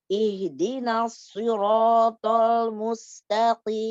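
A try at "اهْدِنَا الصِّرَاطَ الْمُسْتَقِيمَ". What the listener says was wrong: Jepit-jepit. Siratal, lamnya tipiskan. Ada yang jatuh dari situ. Aduh, jepit. As-siratal. Al. Lamnya begini. Lamnya langsung meluas. Al-siratal.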